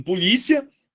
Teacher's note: Em polícia, eu tenho uma palavra que termina em ditongo crescente.